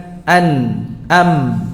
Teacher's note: ada dengungnya, ada suara hidungnya yang keluar dari hidung, yaitu gunnah. Baik dalam keadaan berharakat maupun dalam keadaan sukun.